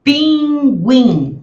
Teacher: as duas sílabas são nasais